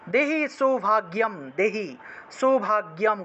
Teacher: গয়ের সাথে জফলা থাকায় গিয় উচ্চারণ